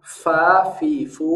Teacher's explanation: huruf Fa sama dengan huruf f 100% sama tapi dengan syarat pengucapan huruf f-nya ada sifat hamesnya menghembuskan nafas karena sering sekali pengucapan huruf F kehilangan sifat Hames jadi Pa